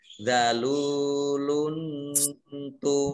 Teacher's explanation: lam dhammah tanwin bertemu dengan ta dibaca samar-samar bacaan ikhfa.